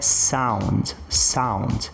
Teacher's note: Apesar de eu ter aqui um encontro entre o e U, eu vou fazer uma pronúncia próxima de um a.